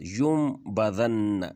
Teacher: نون ساکن کے بعد جب با آ جائے تو اس نون کو میم میں بدل دیتے ہیں ، یعنی ینبذن نہیں پڑھیں گے، یون کی جو نون آواز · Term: اقلاب